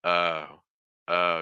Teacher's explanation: for that final o sound it's going to be very open especially compared to like for instance like Spanish at the end